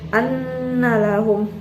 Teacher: nunnya ini dia berharokat tasdid, jadi itu dinamakan gunah musyaddadah dan dibaca panjang dan dengung